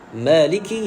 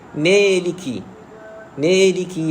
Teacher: Kesilapan yang lain bila mana kita menyebut huruf alif mad ini, kita campurkan bunyi a itu dengan bunyi ya dalam keadaan kita tak sedar, sehinggalah menjadilah bunyi itu jadi imalah sughra baina ataupun bacaan condong lah, bacaan lepeh tu condong.